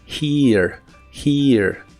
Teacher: La H se pronuncia como una J suave y la I es larga o doble. Naturalmente suena un ligero sonido A antes de la R.